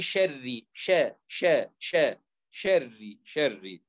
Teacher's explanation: وشر شري الراء الأصل إن هي في هذه الكلمة مرققة لأنها مكسورة